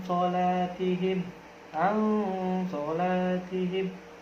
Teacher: Sola, yaitu ketika nun mati bertemu dengan huruf so, itu akan berubah menjadi huruf ikhfa. Cara bacanya pun didengungkan